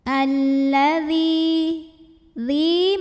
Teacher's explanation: Karena ada ya sukun yang sebelumnya baris kasrah, maka huruf dzal kita panjangkan 2 harokat saja. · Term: mad tabi'i zahiri